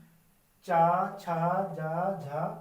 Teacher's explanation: आवाज कहां से आ रही है तालू से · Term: तालव्य